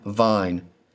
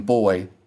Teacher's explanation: There's more air that passes through your mouth with the V. There's a hard stop with B. Because of that, they'll call these or distinguish these as a hard and soft pronunciation.